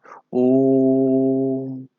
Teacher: जैसे ओम शब्द में तीन मात्रा होगी क्योंकि हम ओ को खींच रहे हैं, ओम, तो वहां पर प्लुत हो जाएगा।